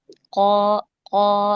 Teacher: Oh, kof ini tadi bagus karena pangkal lidah di sini naik. Nah, di pangkal lidah ya, bukan di ujung ya. Pangkal lidah ini dekat tenggorokan. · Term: qaf